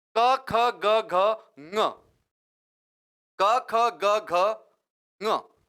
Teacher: क वर्ग जो पूरा है उसका उच्चारण स्थान कंठ है